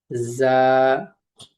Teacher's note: জিহ্বার আগা সামনের নিচের দুই দাঁতের পেটের সঙ্গে লাগিয়ে উচ্চারিত হয় যা তার সঙ্গে একটু করক আওয়াজ হবে যা আমার সাথে বলো যা